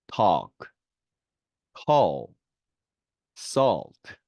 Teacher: O의 발음과 그리고 또 약간 어의 발음, 그 사이의 발음입니다. 우리말의 O와 어의 중간 발음의 느낌이죠.